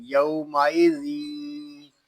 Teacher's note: یہاں ادغام ہوگا اور اس میں غنہ کریں گے، ناک میں آواز جائے گی